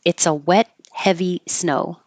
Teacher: Wet and heavy use the same vowel eh.